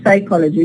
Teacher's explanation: Just we produce the sa. The pa is written but is not produced because it's not allowed to produce a stop followed by a fricative